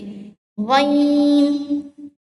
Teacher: ये मोटे हरूफ में से है तो हम होठों को गोल करके मोटा करके पढ़ेंगे